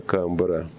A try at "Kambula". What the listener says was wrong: It's Kambula, not Ara. Kambula. You say Kambula. Kambula, not Kambura. Kambula, not Ara.